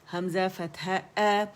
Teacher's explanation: اقص الحلق سے ہمارا جو فار تھروٹ ہے یہاں سے ہماری آواز نکلنی چاہیے. کی ساؤنڈ آنی چاہیے، آ کی ساؤنڈ نہیں آئے گی.